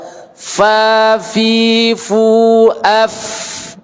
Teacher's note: Keluar angin, Pak. Fa itu melazimkan keluar angin. Angin tidak terhenti